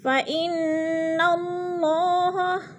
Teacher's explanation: فَإِنَّ کی نون مشدد ہے، سختی سے جمع کر پڑھیں گے یعنی غنہ کریں گے